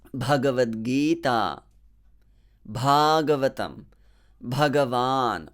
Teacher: so the first ba is aspirated